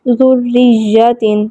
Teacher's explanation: ذریۃ اس میں را پہ زیر ہے تو را کو ہم باریک پڑھیں گے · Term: را مشددہ